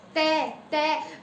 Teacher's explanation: जो हमारी जीभ है ना, ये दांतों को टच कर रही है